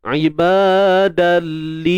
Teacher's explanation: Dia masuk dalli tapi bi ghairi gunnah, tanpa ada dengung. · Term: Idgham bila gunnah